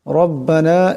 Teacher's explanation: রার উপর জবর আছে, এটাকে মোটা আওয়াজে পড়তে হবে